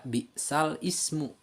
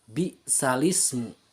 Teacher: itu baris yang ada dalam hamzah al ismu dipindahkan kepada huruf sebelumnya, yaitu lam. Jadi pembacaannya tidak dibaca bi'sal ismu, tapi dibaca bi'salismu.